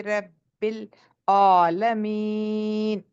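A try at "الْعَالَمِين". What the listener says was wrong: ये मोटा लाइट है, हैवी है? आइन। हाँ, तो आपने कैसे पढ़ा? रब्बिल आलमीन, एक हैवी हो गया, लाइट हो गया। आलमीन नहीं, आलमीन। हाँ, पीछे को पुश अब पीछे से पुश करेंगे, एपिग्लोटिस को पुश करना है, लेकिन जबान को पीछे उठाना नहीं है।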